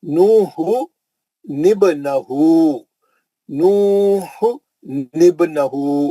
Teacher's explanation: نو، کیونکہ اب دو ساکن آگے تو نہیں پڑھ سک رہے تھے آپ، تو دو ساکن میں سے نون پہلا ساکن تھا، نون ساکن پہلا تھا، تو پہلے ساکن کو زیر دیا انہیں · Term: نون خطنی